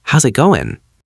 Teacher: We usually connect how and is to sound like house. Then we link the S to it. Finally, we drop the final G in the word going.